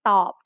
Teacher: Middle class consonants with a dead syllable form a low tone.